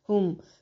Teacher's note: میم ساکن کا اظہار ہے، اخفا نہیں کریں گے، مطلب میم کی ساؤنڈ کو ناک میں نہیں لے کے جانا بلکہ اس کو کلیئر پڑھنا ہے